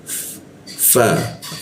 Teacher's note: bibir bawah bertemu gigi atas